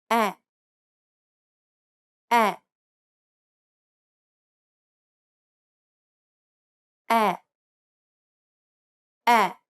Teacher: It's a short open E like sound similar to the sound the A makes in the word at.